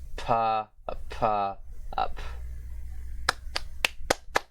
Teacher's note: the voiceless bilabial plosive consonant, but aspirated this time, which is like English P